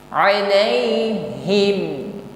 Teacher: Alai ucapkan dengan landai, ringan tanpa ada penekanan, bukan alaihim. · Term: huruf lin